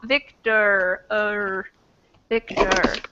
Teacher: We don't say the O sound, right? It doesn't sound like an O. It sounds like something else, and I kind of think there's a tiny little schwa that gets stuck in there.